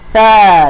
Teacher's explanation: hujung lidah keluar sedikit di antara gigi gunting